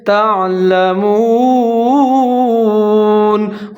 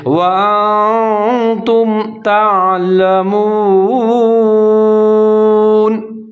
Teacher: میم کے اوپر پیش ہے، واو ساکن ہے، تھوڑا سا لمبا کر کے پڑھیں گے، تعلمون، ہونٹ گول کر کے پڑھیں گے، وَأَنْتُمْ تعلمون۔